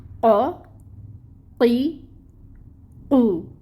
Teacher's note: लिसान हमने कहा कि ज़ुबान है और अक्सा है ज़ुबान का दूर वाला हिस्सा, तो अक्सउल लिसान से ये अदा होगा हर्फ क़ाफ। ज़ुबान की जड़ या पिछला हिस्सा, यानी जहाँ से हमारी ज़ुबान शुरू हो रही है वो अक्सउल लिसान है, ठीक है। · ज़ुबान की जड़ और लहात के मुकाबिल तालु से निकलता है।